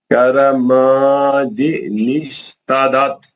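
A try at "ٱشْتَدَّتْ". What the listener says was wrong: تدت نہیں تد دت دال کو دو بار پڑھو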